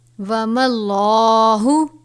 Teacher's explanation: لام سے پہلے زبر ہے، لام کو پر پڑھیں گے